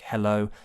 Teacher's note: it's made with the vocal folds approximating which really just means there's breathy air coming out